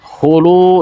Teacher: Hulu, di situ ada lu, ada waw sukun sebelumnya berharokat dhammah, maka disebut mad asli atau mad tabi'i. Panjangnya 2 harakat.